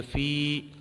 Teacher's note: یا ساکن سے پہلے زیر ہے تو یہاں پر مدہ ہوگا، ایک الف کھینچ کے پڑھیں گے